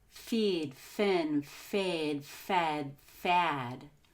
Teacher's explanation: I want you to notice how my jaw or my chin lowers and my mouth gets bigger each time I say a different vowel. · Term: front vowels